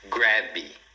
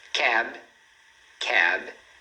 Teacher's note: A gente fecha aqui os lábios para fazer o som do B. Sem colocar esse I que a gente normalmente faz em português, porque a gente sente a necessidade de ter uma vogal depois de consoante, mas em inglês não.